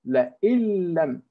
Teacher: So the noon, the na sound has completely vanished or disappeared. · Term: complete merging